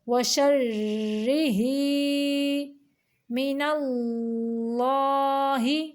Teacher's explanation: یہ جو اللہ کا نام ہے اس کو موٹا پڑھیں گے کیونکہ اس کے پچھلے حرف کے اوپر زبر ہے